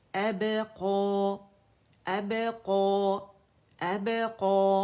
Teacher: अब कलकला बारीक वाला होगा